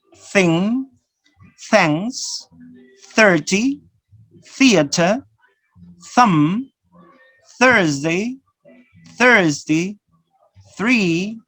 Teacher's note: these fricative sounds are interdental or dental sound notice the position of your tongue yes it's just behind the